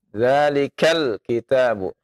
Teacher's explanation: ketika lam dibaca jangan dilepas ya, ditahan